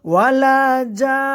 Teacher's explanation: ওয়ালা জান বলে 4 আলিফ পরিমাণ টানলাম আমরা